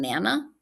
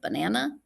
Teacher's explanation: younger children delete that unstressed syllable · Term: unstressed syllable deletion